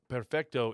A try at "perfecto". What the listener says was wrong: You want to roll the R. Try it. Give it some more oomph.